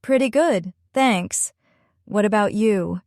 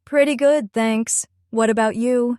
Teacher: the small pause after pretty good, and the way the question tag what about you rises at the end. This is exactly how native speakers make their tone friendly and engaging. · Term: rhythm